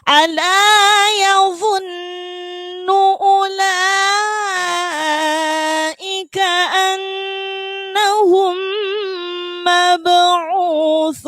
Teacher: ujung lidah harus digigit. Kalau nggak digigit jadinya su, jadinya huruf sin.